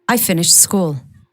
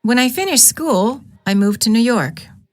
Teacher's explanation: The first sentence has falling intonation which indicates that the thought has ended. The second sentence contains rising intonation indicating that the thought has not ended.